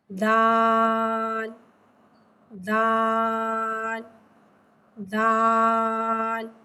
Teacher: जबान की नोक और ऊपर के दांतो की जड़ से अदा होता है दान दान दान दल को एक अलिफ तीन हरत के बराबर